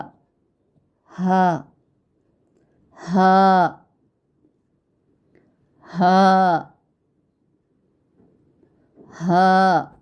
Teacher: باریک اور بغیر رگڑ کھاتی سانس میں آپ نے ہا کو ادا کرنا ہے. ٹھیک ہے، اس کی ادائیگی میں خیال رہے کہ زیادہ سانس نہ نکلے.